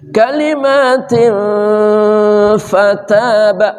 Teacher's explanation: Tanwin bertemu fa namanya ikhfa haqiqi. Samar dan dengung.